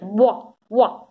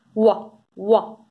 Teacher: you make the tongue and the velum go very near.